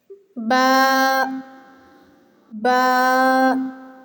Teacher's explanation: بند ہونٹوں کے گیلے حصے سے با ادا ہوتا